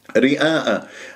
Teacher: لديك الراء مرققة لأنها مكسورة واجتمع حرف المد والهمزة في كلمة رئاء، فيكون المد واجب متصل أربع أو خمس حركات. رئاء، شوف ما تقول رئاء الناس، تبتسم بالشفة تميل الألف وصوتها غير مستساغ وما حلو، وتسحب اللسان إلى الخلف وتجعل اللسان منبسطة، خليك بس بالتباعد بين الفكين واللسان مرتاح.